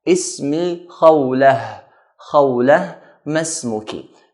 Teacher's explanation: here we're going to stop at the word khawla, so we should pronounce it with a ha sound